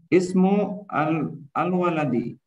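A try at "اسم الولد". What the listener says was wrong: Disambungkan ismul.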